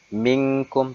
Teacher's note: Minkum ikhfa, samar-samar. Di mana nun sukun, ini nun mati ini diikuti oleh huruf kaf. Tuh, maka dia harus dibaca samar-samar.